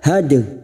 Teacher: dal sukun qalqalah sugra yang mati asli di tengah kalimat, jangan lupa dipantulkan